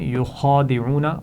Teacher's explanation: یخادعون خا کو موٹا پڑھیں گے، عین کو حلق سے ادا کرنا ہے